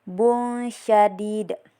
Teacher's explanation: tanwin bertemu dengan salah satu dari huruf ikhfa yaitu sya jadi baca samar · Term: ikhfa hakiki